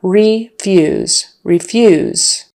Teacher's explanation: refuse stress on the second syllable and the long e